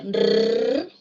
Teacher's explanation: Vibrante múltiple alveolar, sonora. Esa vibrante se representa con la letra R sola o con el dígrafo doble R.